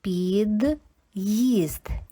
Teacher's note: Після апострофа ми бачимо, що звук ї теж звучить як два звука і зветься йотованим.